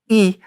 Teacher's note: if you look at my lips when I say e my lips are tight and back